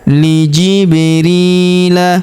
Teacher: Huruf ri kita panjangkan dua harakat karena terdapat ya sukun di depannya.